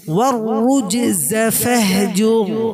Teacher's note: জিমটা হালকা পরিমাণে আমরা কি করব, কলকলা করব। ওয়াররুজজ ফাহজুর, রটাকে আমরা মোটা করব।